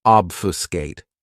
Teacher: This verb has three syllables and the stress is on that first syllable. · Another great verb, which is one of my favorites, is obfuscate. This verb has 3 syllables, and the stress is on that first syllable. Obfuscate. What it means to obfuscate something is to confuse or bewilder, and just try to create a confusing situation so that it's really difficult to understand.